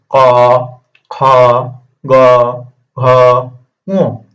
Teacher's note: ক, খ, গ, ঘ, ঙ কোথা থেকে উচ্চারণ হচ্ছে? এটা ক থেকে, আমার কণ্ঠ থেকে হচ্ছে